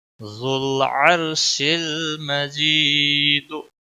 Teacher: لام کو ہلانا نہیں ہے. را موٹا پڑا جائے گا کیونکہ پیچھے زبر ہے. یا ساکن سے پہلے زیر ہے مجی ایک الف کے برابر اس کو کھینچنا ہوگا.